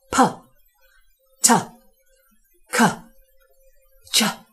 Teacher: the sounds exploded variously using the lips and the tongue tip and the soft palate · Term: plosive consonants